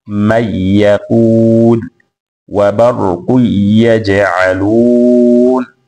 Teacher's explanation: anasoma kwa kuiacha ghunna nuni ya sakna au tanwin itakapokutana na herufi ya waw au herufi ya ya. Kwa hiyo mfano man yaqul, hatweka ghunna, anasoma man yaqul, wa barqu yaj'alun. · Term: pasina ya ghunna